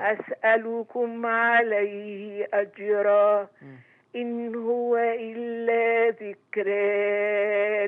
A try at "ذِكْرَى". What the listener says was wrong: لله لا بتمدي ده كله ليه؟ ذكرى تتمدي ده كله ليه؟ أحسنتي بس خلي بالك من أزمنة المدود لكن التلاوة طيبة جدا يا أم خالد